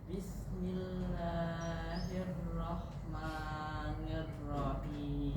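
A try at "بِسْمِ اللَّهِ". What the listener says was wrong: Jangan ditahan basisnya. Jangan bis. Jangan ditahan pakai lidah.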